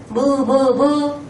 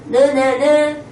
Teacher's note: 코쪽으로 공기를 내보내면서 소리가 나는 거였어요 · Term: 비음